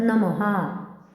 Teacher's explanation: विसर्ग स्वरानंतर येतो. पंक्तीच्या शेवटी येणाऱ्या विसर्गाचे उच्चारण ह सारखे केले जाते. त्यामुळे याचं नमः असं होईल.